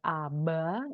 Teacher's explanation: Beh itu ketika dia di antara vokal misalnya aba itu Eh voiced ya · ketika dia di antara vokal misalnya aba itu, voiced ya, betul-betul dia, bersuara. Tapi ketika dia ada di akhir kata ya, misalnya seperti kitab, ya itu akan, ada de-voicing ya.